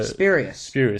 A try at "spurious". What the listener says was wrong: Yeah, you pronounced the U.